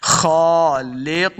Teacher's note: खा को मोटा पढ़ना है, खा के ऊपर खड़ी ज़बर है, इसको दो हरकत लम्बा करके पढ़ेंगे, खालिकून, काफ पेश वाव कू, काफ को मोटा पढ़ना है, वाव मद्दा इसको दो हरकत लम्बा करेंगे